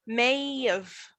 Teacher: So I don't have a consonant. I have a vowel. I say of. I don't say have.